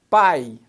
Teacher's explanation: a vogal A vem antes da semivogal I.